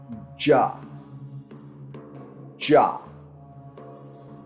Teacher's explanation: a voiced post-alveolar affricate